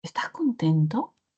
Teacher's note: usted va a sentir cómo es que parece que subiera el tono